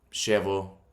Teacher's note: So in Argentina, it'd be like a sh sound, like sh.